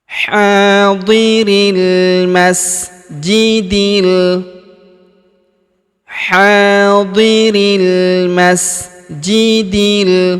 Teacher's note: Alif bengkok atau alif maksurah di depan huruf ri tidak dibaca atau tidak dianggap ya. · Hadiril huruf ri langsung sambung masuk ke huruf lam yang berharakat sukun langsung masuk ke sini. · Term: alif lam qamar